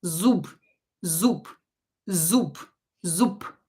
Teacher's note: instead of B here, you can hear that I pronounce P